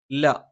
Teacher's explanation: നാവിന്റെ അറ്റം മേലെ മുൻപല്ലിന്റെ മോണയിലാണ്